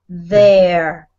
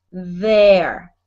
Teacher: So here it doesn't have a double sound, but always remember there it has a double sound and it's a vibration on your throat when you feel it